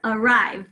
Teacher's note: we hear that schwa in the first syllable, spelling it with an A.